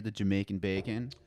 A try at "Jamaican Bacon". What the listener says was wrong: You gotta put some emphasis on the bacon.